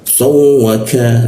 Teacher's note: huruf ka di siku tenggorokan, lidahnya diturunkan sehingga rongga udara terbuka dan ada hembusan udaranya.